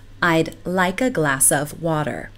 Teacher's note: the K in like links to a and the s in glass links to of